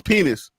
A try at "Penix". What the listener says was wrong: His name is Penix. You're pronouncing it like the word penis, and it's pronounced Penix.